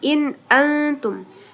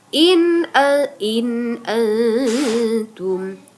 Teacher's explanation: Nun mati bertemu dengan alif itu tadi ya in an disebut izhar halqi. Jadi bacanya jelas.